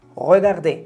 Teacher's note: O cuando digo un verbo en infinitivo, verbo de primer grupo que termina en ER, regardez, mirar. Regardez, termina en ER, pero solo suena una E abierta. Esa es la E como la del español, la E sonriente.